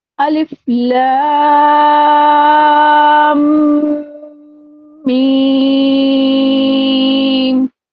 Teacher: اب لا کو کھینچتے کے ساتھ ہی میں نے فوراً میم کا مخرج پڑھا، دونوں ہونٹوں کو بند کر دیا.